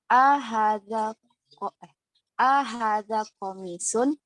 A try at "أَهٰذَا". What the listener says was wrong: Ahada, A-nya jangan dipanjangkan.